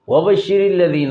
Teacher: واو زبر واو متحرک کا مخرج دونوں ہونٹ ہیں، با کا بھی دونوں ہونٹ ہیں۔